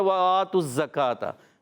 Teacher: یہ حمزہ ہے، اس کو ایک الف کھینچنا ہے اور تا کی پیش کو ڈائریکٹ زا سے ملانا ہے · واو کی ادائیگی ہونٹوں کی گولائی سے، حرکت ہے، نہیں کھینچیں گے